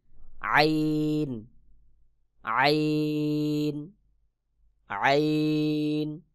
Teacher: হলক অর্থাৎ কণ্ঠনালীর মধ্যখান হইতে গলার মধ্যখান হইতে আইন উচ্চারণ হবে